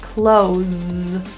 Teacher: But when we use this word as in the verb close the door, then that S is pronounced as a Z.